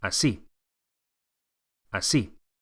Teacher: Make sure you accentuate the second syllable